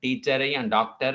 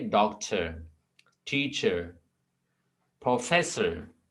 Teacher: और ये इंग्लिश में याद रख लें कि जब आर कोई एंड में आ जाए ना, किसी वर्ड के एंड में आ जाए, हम उसको भी नहीं पढ़ते हैं